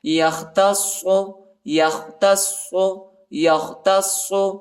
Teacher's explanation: صاد کو شدت کے ساتھ سختی کے ساتھ پڑھیں گے، صاد پر شد آیا ہے.